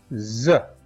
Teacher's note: za is a sound that does have vibration and so it is voiced